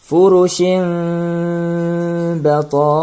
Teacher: Tanwin bertemu dengan huruf ba, maka di sinilah terjadi hukum iklab. Ya, bunyi tanwin berubah menjadi bunyi mim mati yang ringan